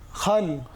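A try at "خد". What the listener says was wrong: না, এটা হবে কি খদ। এটা দাল তো, তাই না?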